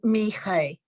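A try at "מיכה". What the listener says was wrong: You're gonna have to practice getting your tongue around that chaf sound. It's tricky. It's tricky.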